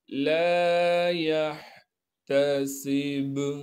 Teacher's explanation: बा पर वक़फ़ की हालत में क़लक़ला करेंगे, जब वक़फ़ नहीं करेंगे फिर यहाँ क़लक़ला नहीं होगा।